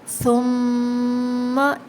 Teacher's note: ثم، جیسے کہ ہم نے پہلے بتایا میم مشدد میں غنہ ہوگا اور ثا نرمی سے ہوگا ادا